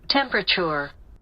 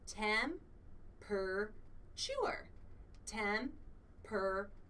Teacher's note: So the schwa sound is right there in the second syllable.